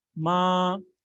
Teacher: So the first tone was totally high.